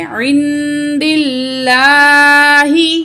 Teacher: کیا ہے، دال، تو اس کے نیچے کیا ہے، زیر ہے، تو ہم نے اس لفظ اللہ کو باریک پڑھنا ہے